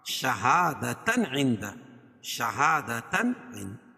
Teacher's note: تنوین کے بعد حروف حلقی کے 6 حرفوں میں سے عین ہے، تو یہاں اظہار ہوگا، یعنی ظاہر کر کے پڑھیں گے. عندہ. اور یہاں اخفاء حقیقی، کیونکہ نون ساکن کے بعد حروف اخفاء کے 15 حرفوں میں سے دال ہے، تو یہاں ناک میں آواز کو چھپا کر پڑھیں گے.